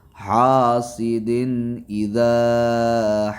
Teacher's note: حاسدن کے تنوین پہ یہاں اظہار ہوگا،